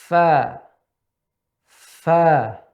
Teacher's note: bisa dirasakan pita suara kita tidak merapat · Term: huruf hamsun